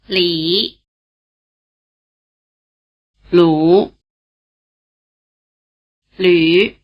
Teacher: the new vowel, written U umlaut, combines features of the vowels written I and U. It has roughly the tongue position of the vowel sound E, and roughly the lip position of the vowel sound U.